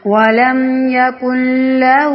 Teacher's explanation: کاف کو سیدھا لام کے ساتھ جوڑیں گے، نون کو سائلنٹ کر دیں گے